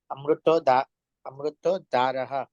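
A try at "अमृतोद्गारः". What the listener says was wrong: अमृत उद्गार, उद्गार उद्गार, पीछे ग आपके शायद प्रिंट में नहीं होगा, उदगार, द आधा है उसके नीचे ग है।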